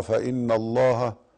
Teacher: حرف غنة مشدد وهي النون